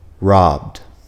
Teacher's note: third we have the D sound this is used when the verb ends with a voiced sound